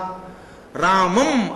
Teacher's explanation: రామం అనగానే ఆ చివర సున్నా ముక్కుతో పలుకుతాం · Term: అనుస్వారం